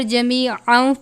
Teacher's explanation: تنوین کے بعد واو ہے حرف یرملون میں سے، یہاں پر جمیعا پڑھیں گے یعنی واو کی آواز آنی چاہیے